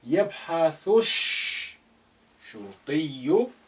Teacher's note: يبحث Again, alif is silent because it's not at the beginning. Lam is silent because sheen, which is sun letter, after it, and is carrying the shadda. Therefore, you link the thu with the first sheen, which is carrying sukun.